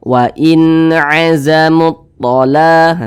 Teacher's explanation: Terjelas, jelas huruf nunnya tuh jelas, huruf n-nya tuh terbaca dengan jelas, wain begitu. Kemudian tidak didengungkan, jadi dibaca pendek saja · Karena dia izhar, maka dibaca jelas, tidak berdengung. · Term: izhar halqi